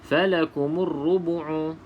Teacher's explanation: maka dekat sini berlaku hukum alif lam syamsiah alif lam syamsiah maka huruf lam ini kita tidak sebut ataupun tidak jelaskan di dalam bacaan